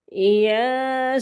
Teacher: قاسین یا کھڑی زبر ہے، ایک الف کے برابر لمبا کریں گے. سین مد ہے، 5 الف کے برابر لمبا کریں گے